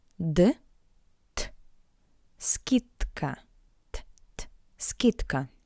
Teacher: The voiced consonant d in front of the voiceless consonant k sounds like it's paired consonant t